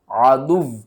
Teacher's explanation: یہاں پر واو کے اوپر تشدید ہے تو ہم واو کو سختی کے ساتھ پڑھیں گے